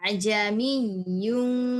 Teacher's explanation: yang pertama hamzahnya dibaca jelas, sedangkan hamzah yang kedua itu dibacanya samar antara hamzah dan alif. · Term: tashil